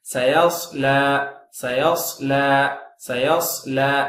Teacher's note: சாத் உதடு குவிச்சு சயஸ்லான்னு சொல்லிடாதீங்க